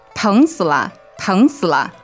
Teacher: All right, so second tone and then 死 is third and 了is neutral, right?